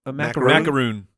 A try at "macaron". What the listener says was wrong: Are you sure that's how it's pronounced? spelled without the end is O-N. It's not O-O-N.